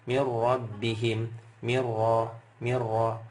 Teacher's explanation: madunka Milla mirbihim mirro mirro enggak pakai ditahan enggak pakai dengung enggak pakai Mir enggak pakai gitu langsung ya karena ini bila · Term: bila ghunah